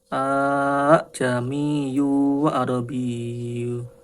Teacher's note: hamzah kedua dipermudah saat membacanya dengan menempati makhrajnya antara alif dan hamzah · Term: tasil